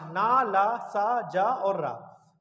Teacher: ब्रस्य यानी मसूड़ों से निकल सकते हैं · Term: ब्रस्य व्यंजन